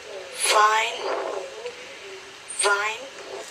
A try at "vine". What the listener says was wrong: So with the V, you also need to practice that. You have to produce the V with more vibration. You have of, have, vine, van.